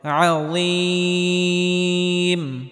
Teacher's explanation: মাদের হরফের পরের হরফে যদি ওয়াকফ করা হয় তাহলে তিন আলিফ পরিমাণ লম্বা করে টেনে পড়তে হবে